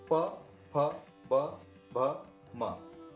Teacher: इसके बाद ओठ मिलने के कारण जो उच्चारण निकलता है वो ओष्ठ्य कहलाते हैं। ओष्ठ्य मतलब जिनमें ओठ मिलने पर ही उच्चारण संभव है।